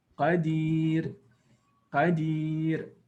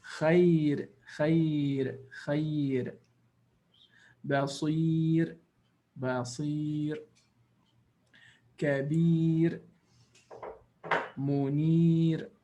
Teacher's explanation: So what happens to the ra? It becomes muraqqaqa. It becomes soft or empty mouth. · It is not strong or emphatic or full mouth. It is a soft sound or an empty mouth.